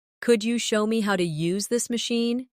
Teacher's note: Could you becomes could ya in casual rhythm.